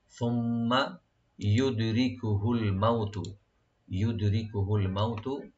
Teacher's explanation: দালে একটু কলকলা করবো আমরা, রা পাতলা করে পড়বো